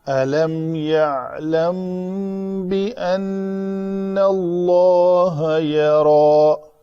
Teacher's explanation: میم ساکن کے بعد با ہے تو یہاں پہ اخفاء شفوی ہوگا. 2 حرکت کے برابر اس کو یہاں پہ ٹائم دینا ہے.